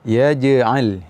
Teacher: Pada kata-kata yaj'al, jim dalam keadaan sukun, maka ada sifat qalqalah. Dan sifat qalqalah pada huruf jim ini, huruf jim bukanlah huruf yang berangin.